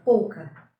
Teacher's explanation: o U é átono, semivogal, acompanhado de O na mesma sílaba.